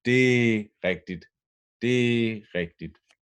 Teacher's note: it's important that you pull D and R together to one word, one syllable.